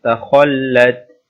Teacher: here kha is full mouth